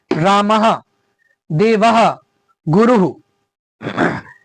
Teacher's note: अंत में विसर्ग को बोलते समय थोड़ा बहुत हा के जैसा उच्चारण हो रहा है